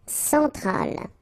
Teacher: E-N nasal, so it goes in your nose